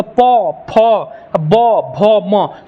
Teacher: प में दोनों लोल सटा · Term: ओष्ठ वर्ण